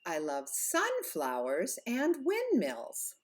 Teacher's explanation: you go up on the first part of each of those compound nouns